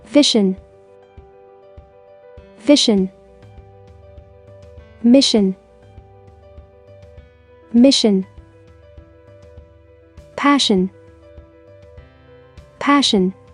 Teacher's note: as the s i combination together sounds sh the i sound in the combination is not heard again